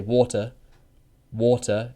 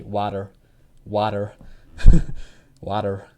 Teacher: We pronounce the ta and we don't use r. So water, ta.